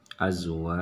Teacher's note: Di sini wa, di sini adalah mad tabi'i alif karena ada alif di sini. Wa-nya dibaca panjang.